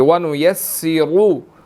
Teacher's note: را کے اوپر پیش ہے, ہم نے یہاں پر اس کو موٹا ادا کرنا ہے